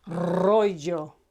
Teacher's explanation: any Spanish word starting with an R is written as a single R but pronounced as a Double R